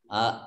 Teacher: Man amana nun sukun bertemu dengan huruf alif idhar dibaca jelas.